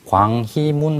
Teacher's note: 그래서 광희문 할 때 희 같은 경우에 이게 흐이로 나지 않고 히로 나거든요